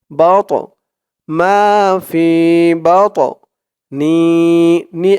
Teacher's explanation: আলিফ টান জের পরে ইয়া সাকিন মাফি ইন্নিকাতনি বা দিয়ে ধরবে বা এই তল কলার হরফ ধাক্কা দিয়ে পড়তে হবে